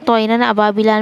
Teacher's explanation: نون کو ناک میں چھپا کر نہیں پڑھیں گے بلکہ ظاہر کر کے پڑھیں گے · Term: اظہار